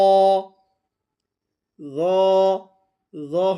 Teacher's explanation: র হরফটাও মোটা, তবে জিহ্বার আগা থেকে র উচ্চারিত হয়।